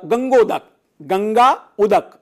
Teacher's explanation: गा में आ है और ऊ है, वो मिलेंगे तो ओ बन जाएगा, तो गंगोदक हो जाएगा।